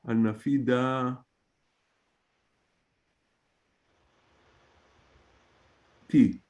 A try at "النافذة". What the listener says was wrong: Fantastic. Very good.